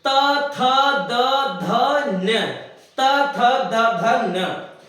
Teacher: जब ता बोलते हैं तो हमारी जो जीभ है वो दांतों से टकराती है, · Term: दंत्य व्यंजन